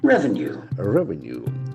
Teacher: Revenue is a beautiful word where the accent falls on the first syllable.